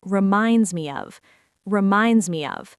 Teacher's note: We do not say, "Actually, that reminds me of." We link the words together so they flow like one long sound. The S at the end of reminds connects smoothly to the M in me, and the E in me connects with a tiny, hidden Y sound to the word of. · The S at the end of reminds connects smoothly to the M in me, and the E in me connects with a tiny, hidden Y sound to the word of. It sounds like reminds me of reminds me of.